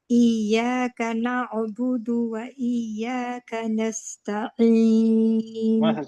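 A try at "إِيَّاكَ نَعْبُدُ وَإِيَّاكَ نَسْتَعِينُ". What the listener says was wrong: Very good very good, आपने सही पढ़ा।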